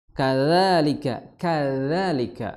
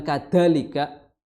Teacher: Dzal seperti huruf tsa ya. Ujung lidah bertemu dengan ujung gigi seri atas.